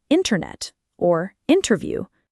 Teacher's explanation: the dropped T, where T after an N often disappears, as in internet or interview